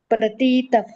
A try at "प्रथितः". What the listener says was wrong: प्रथिती ह्रस्व पाहिजे हं. प्रथितप असं प्रथितप हा प्रथितात असं